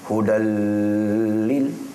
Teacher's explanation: Dia tak sebut hudan D-A-N, bukan. Dia hudal. Itu maksud memasukkan. · Tak dengung kan? Dia laju je sebab berjumpa dengan lam ataupun ra. 2 atas ni tak dengung. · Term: idgham bila gunnah